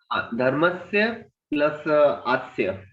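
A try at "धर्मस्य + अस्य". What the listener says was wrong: Okay, धर्मस्य प्लस अस्य, आस्य, अस्य नहीं है वो, धर्मस्य प्लस अस्य, अस्य अस्य धर्मस्य, इस धर्म का, ऐसे है, धर्मस्य प्लस अस्य। आपने दो बार बोला, लेकिन दोनों बार मैंने आस्य सुना, आस्य नहीं है वो, अस्य है वो, धर्मस्य प्लस अस्य, ठीक है।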